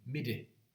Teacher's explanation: There's a palatalized tap.